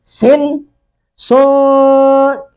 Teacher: سن سو یہ سو ناک میں آواز جو گئی ہے یہ اخفا ہے.